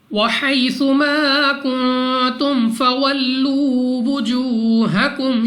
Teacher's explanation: بعد فا یہاں پہ ہم نے بغیر غنہ کے پڑھنا ہے، واو ساکن سے پہلے پیش واو مدہ 2 سیکنڈ تک لمبا کرنا ہے، · میم ساکن کے بعد فا یہاں پہ ہم نے بغیر غنہ کے پڑھنا ہے، · نون ساکن کے بعد تا حروف اخفا میں سے ہے، اخفا کا قاعدہ غنہ کر کے پڑھیں گے،